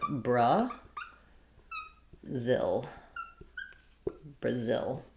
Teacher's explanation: in English, Brazil, second syllable stress. We have a schwa for letter A. And then the letter I says the I sound, like in it or little. · Maybe a little bit different on the L. But in English, Brazil, second syllable stress. We have a schwa for letter A.